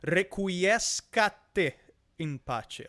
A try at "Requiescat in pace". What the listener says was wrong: There's no te. Requiescat pace.